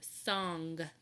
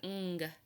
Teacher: We hear that ng sound again. The N and the G blended together.